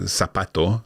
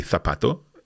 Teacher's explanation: because we pronounce a Z with a th sound